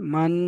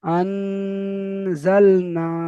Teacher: এবার দেখেন নুন সাকিনের পরে হুরুফে ইকফার 15টি অক্ষরের মধ্যে থেকে যা এসেছে, তাই নুন সাকিনের আওয়াজকে নাকে তুলে একালি পরিমাণ গুণনা করে পড়তে হবে। যেমন আন, এই নাকে তুলে একালিপ গুণা হলো, আনজালনা।